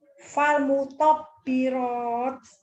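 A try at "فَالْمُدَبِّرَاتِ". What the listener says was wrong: Itu kan dal, Bu. Panjang. Fal mudabbirat.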